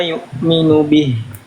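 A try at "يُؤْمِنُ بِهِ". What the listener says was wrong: Oke, di sini kurang ditahan sedikit. Di sini ada nun sukun ya, nun sukun ketemu huruf ya menghasilkan tasydid.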